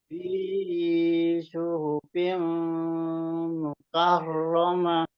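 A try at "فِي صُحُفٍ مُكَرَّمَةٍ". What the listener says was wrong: Ya, mimnya itu fim, fim itu ditegas lebih diperjelas lagi. Fi suhufim mukarramah. Fi dua harokat, fim tadi itu apa namanya idgham biunnah, karomah. Nah, jadi karomah itu ada tasdid.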